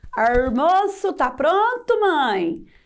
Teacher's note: Chico Bento é um personagem da Turma da Mônica que fala como um caipira, exagerando na pronúncia de algumas letras. Ele troca o L por R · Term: fala caipira